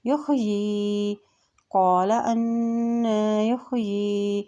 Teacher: یا کے نیچے کھڑی زیر ہے، کھڑی زیر کو بھی ہم ایک حرکت لمبا ادا کرتے ہیں